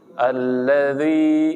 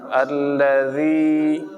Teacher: Huruf zal bukan. Huruf zal tidak boleh dibaca tebal atau ditekan, tidak boleh.